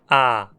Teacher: Já a vogal A, como em pá, não é arredondada. Os lábios permanecem mais relaxados.